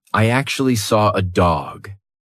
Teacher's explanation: I definitely just did an R sound. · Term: intrusive R